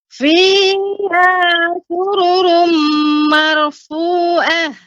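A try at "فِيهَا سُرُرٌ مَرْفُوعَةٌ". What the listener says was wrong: Mer dibaca tebal Ibu. Marfu'ah. sururumnya Ibu, sururumnya kurang panjang gunnahnya. Fiha sururum marfu'ah.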